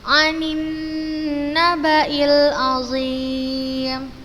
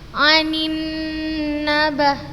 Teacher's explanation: Kita baca dengan tempo gunnah yang dipanjangkan. harokat kasroh bertemu dengan huruf nun bertasydid, maka kita baca dengan gunnah yang dipanjangkan.